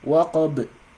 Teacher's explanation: their pronunciation is going to be with sukun, is going to be with echo